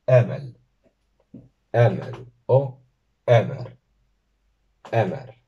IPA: 'ɛ.mɛl , 'ɛ.mɛr